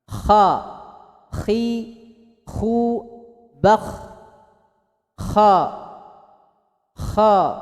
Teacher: pangkal lidahnya ngangkat ke langit-langit, tebal